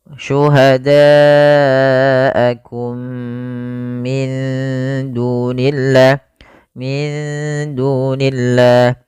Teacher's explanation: Ini merupakan bacaan idgham mimi. Yaitu mimnya dimasukkan kepada mim yang kedua dan ditahan